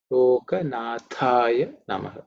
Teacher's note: The Tha is the second letter in the Tha Varga, so it's aspirated with a little extra.